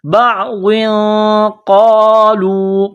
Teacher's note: تنوین کے بعد قاف ہے, حروف اخفا ہے, تو یہاں غنہ کرنا ہے, آواز ناک میں چھپانی ہے